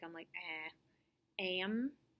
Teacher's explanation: when the um or un sound follows the short a vowel sound the a sound changes it's more nasal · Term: short a followed by a nasal